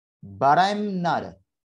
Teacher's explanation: Suara t pada kata not yang merupakan consonant ini kita bisa flapkan suaranya yang semula not, ya, not atau not menjadi nada.